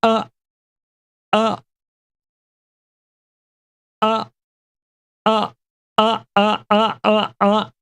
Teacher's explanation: our breath and we make sound this is called a glottal you are holding your breath so the folds come together